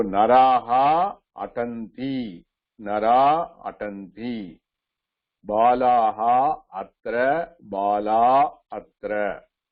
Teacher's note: A followed by visarga followed by any vowel. Again, visarga is dropped.